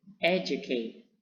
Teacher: Primary stressing itu terdapat di pertama pada kosakata educate